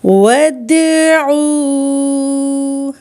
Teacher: دال پہ کلکلا اور عین واو مدہ